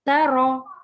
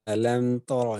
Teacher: ता बारीक है, रॉ मोटा है, तौरा नहीं ता रॉ